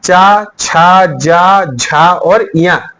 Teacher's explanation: जो इसकी ध्वनि निकलती है वो कहां से निकलती है, तालव्य से, यानी कि तालु से निकलती है